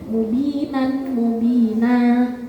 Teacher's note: Mad iwad itu fathah tanwin yang dibaca waqaf kecuali tak marbutah. Itu kan dibaca panjang satu alif.